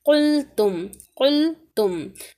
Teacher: یمسسکا یا پھر یمسسک، عس عس عس عس، قلتم قلتم، ہاں یہاں پر دیکھیں قاف موٹا لفظ ہے لیکن لام باریک ہے